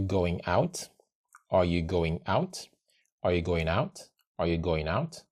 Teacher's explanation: And then we'll link the N to the O, going out. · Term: linking sounds